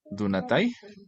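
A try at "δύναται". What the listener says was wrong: Sí, señor Donatai.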